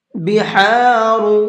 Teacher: ہا کو حلق سے نکال کر کے پڑھیں گے، بہارو نہیں پڑھنا ہے۔